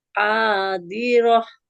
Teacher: yang panjang huruf h-nya karena fathah bertemu alif